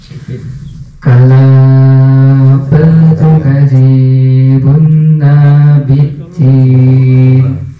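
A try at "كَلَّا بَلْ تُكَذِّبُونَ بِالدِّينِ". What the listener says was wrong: itu pendek. Panjang bedanya coba diteliti lagi.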